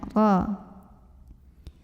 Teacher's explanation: Huruf ra dibunyikan secara tafkhim karena ra-nya berbaris fathah tanwin. Cara membacanya ditebalkan, pangkal lidah dinaikkan.